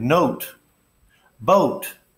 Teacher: the long o sound is really two vowel sounds also it's a diphthong